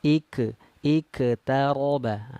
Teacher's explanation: huruf qf dan Kaf ini makhrajnya sangat berdekatan